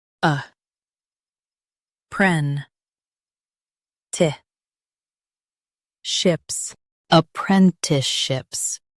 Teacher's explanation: Stress pren and keep ti-ships light.